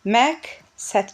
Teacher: Kar samitin qarşısında işlənən q samitini biz k kimi tələffüz eləyəcəyik.